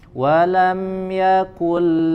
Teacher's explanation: Bunyi atau suara huruf nun sukun dileburkan ke huruf lam ya dan tidak disertai dengan ghunnah atau dengung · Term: idgham bila bilagunnah, idgham bila gunnah